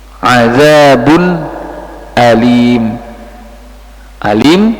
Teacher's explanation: karena di akhir wakaf tanwin domah tanwinnya tidak dibaca